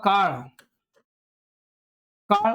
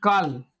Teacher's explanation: आपला ळ जे वर्ण आहे ते मित्रांनो आहे मूर्धन्य ळ म्हणजे आपण आपली जीभ आहे ती मागच्या बाजूने येते आणि